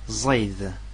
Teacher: Z avec un petit point en bas. C'est un Z dit emphatique.